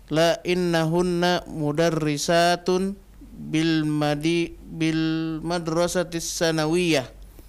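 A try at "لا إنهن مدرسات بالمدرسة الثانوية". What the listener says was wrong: Sa-nya panjang kan. Nah, yang panjang sa-nya, bukan nunnya. Banyak orang baca bil madrasatis sanawiyah, salah. Sa-nya yang panjang.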